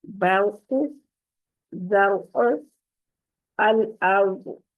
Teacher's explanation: را کے اوپر جزم ہے اور اس سے پیچھے ہے با، با کے اوپر زبر ہے تو اس را کو موٹا پڑیں گی. برق، زرع، الارض.